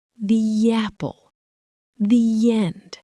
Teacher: We add a tiny invisible Y sound between the words. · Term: intrusion